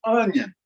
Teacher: that is an uh sound like the uh in onion onion you notice how much longer that o sound is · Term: wedge